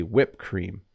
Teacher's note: in English you might hear someone say whipped cream without pronouncing the Ed this is technically incorrect but